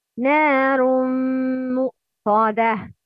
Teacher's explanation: نار مؤصادة نون مشدد and ميم مشدد نار مؤصادة nasal sound with two beats vibration